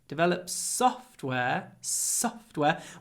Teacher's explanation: try to make the S long